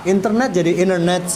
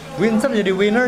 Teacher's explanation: n plus t you can delete the T sound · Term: American Style